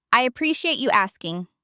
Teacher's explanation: The key is the intonation, rising on appreciate to show openness